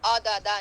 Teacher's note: عین کو آ کر کے نہیں پڑھنا، عددا نہیں ہے، نہ آ نہ آ، ہمیشہ عین کو گلے کے درمیان سے، عددا.